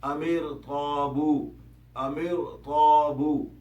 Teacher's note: اگر را ساکن ہو اور اس سے پچھلے حرف پر زیر بھی ہو پھر بھی کچھ حالات میں را کو موٹا ہی پڑھا جائے گا